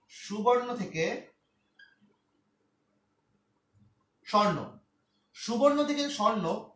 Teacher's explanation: উকার বাদ পড়ার কারণে বলা হচ্ছে মাঝখান থেকে চলে গেল, মাঝখানে একটা স্বরধ্বনি চলে গেল। রস্যুকার নিশ্চয় স্বরধ্বনি ছিল, তো এই চলে যাওয়ার পর এই বটা, এই বটা জাস্ট এখানে ফলাকারে চলে আসে, তখন তখন হয়ে গেল স্বর্ণ, সুবর্ণ থেকে স্বর্ণ। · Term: মধ্য স্বরলোপ